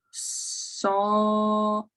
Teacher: There is an open O, an L, an open E, and a Y, a J glide.